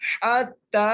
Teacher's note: ہا کو تا سے ملانا ہے تا کو ایک الف مدار کھینچ کے پڑھنا ہے